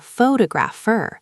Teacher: The stress moves to the second syllable, which changes every vowel sound in the word.